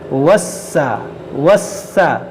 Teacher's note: سین جو ہے مشدد ہے، اس کو پڑھیں گے 2 بار، وسا وسا، اور پھر دیکھیں یہ الف مدہ ہے، الف سے پہلے زبر ہے اور اس کے بعد حمزہ ہے، اور حمزہ اسی کلمے میں ہے۔